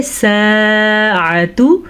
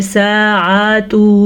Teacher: ساعۃ، سین کے بعد الف ہے تو یہ الف مدہ کہلائے گا کیونکہ اس سے پہلے الف سے پہلے سین پہ زبر ہے، تو اس کو ہم کھینچ کے پڑھیں گے ساعۃ۔ عین کو کھینچ کے نہیں پڑھنا، عین کو تھوڑا سا بھی لمبا نہیں کرنا۔